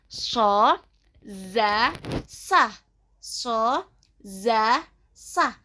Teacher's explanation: ujung lidah bertemu sedikit dengan bagian atas kedua gigi seri yang bawah. Keluar dari sini adalah huruf sod, zai, dan sin. So, za, sa.